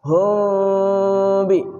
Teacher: Samar di bibir beserta gunnah. Mulutnya dibuka sedikit sehingga terdengar suara samar. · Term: ikhfa syafawi